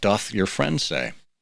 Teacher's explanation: puts a th in there instead of an s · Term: lisps